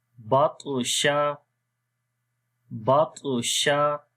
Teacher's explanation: طا کو موٹا بھی پڑھیں گے اور قلقلہ بھی کریں گے